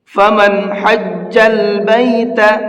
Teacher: یہاں نون کے اندر میں نے اخفا غنہ کچھ نہیں کیا ہے، اس کو صاف صاف پڑھا ہے، اور اس صاف صاف پڑھنے کو اظہار کہتے ہیں۔